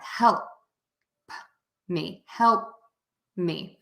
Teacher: I almost touch the top of my mouth with my tongue for that L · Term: dark l